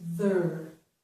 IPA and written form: ðər (ther)